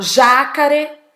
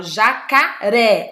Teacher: Eu falo jacaré. Olha a sílaba forte aí, ó. É o ré.